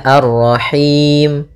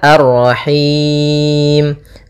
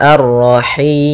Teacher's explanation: boleh kita panjangkan hi-nya karena bertemu dengan huruf mad, boleh 2, boleh 4, boleh 6. Maka kalau 2 misalnya Ar-Rahim, kalau 4 Ar-Rahim, kalau 6 Ar-Rahim. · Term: mad arid lis sukun